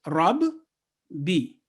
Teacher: Tashdid, stressing. Mushaddad means hardened, and this letter should be stressed approximately in the pronunciation for 2 seconds.